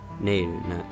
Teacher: the extension of the ne sound may indicate that the accentation goes on the first syllable, Nayru, so it's not neeru or something, which would sound kind of odd.